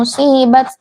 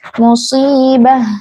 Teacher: ta marbutah jika diwakafkan itu dibaca menjadi huruf ha. Bukan huruf ta. Bukan musibah, bukan musibat tapi musibah. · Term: tak marbutoh